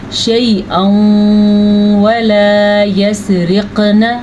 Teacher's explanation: تنوین کے بعد یا میم واو نون میں سے واو آیا ہوا ہے، اس لیے یہاں پہ ادغام بالغنہ کا قاعدہ ہوگا